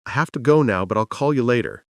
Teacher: Strong words are have, go, now, call, later. The rest are weak background sounds. · Notice the reductions. Have to became hafta, will became ul, you became ya. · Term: rhythm